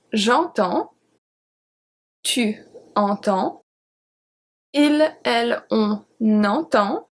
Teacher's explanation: the 5 first ones are pronounced exactly the same since we don't pronounce the S. The S is a silent letter.